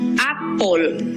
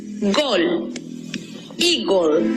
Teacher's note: Por ejemplo, la palabra manzana, que en inglés se escribe, notamos que la última sílaba está compuesta por E muda, precedida de L y otra consonante. Recordemos que al no tener sonido la E, matizamos las dos consonantes que nos quedan con el sonido O.